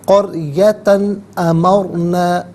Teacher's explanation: قریتن میں تا پر 2 زبر کی تنوین ہے، تنوین کے بعد حرف حلقی حمزہ آ رہا ہے تو تنوین کو یہاں پر اظہار کے ساتھ پڑھیں گے، اخفا یا غنہ نہیں کیا جائے گا۔